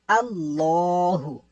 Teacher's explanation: یہ آپ دیکھ سکتے ہیں الف کے اوپر کیا چیز ہے، زبر ہے۔ اب یہ اللہ عز و جل کا جو لام ہے اس سے پہلے زبر آ گیا ہے تو ہم نے اس کو موٹا پڑھ دینا ہے